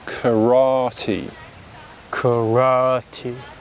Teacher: so notice how we're stressing the second syllable so in japanese it's three similar symbols three similar syllables karate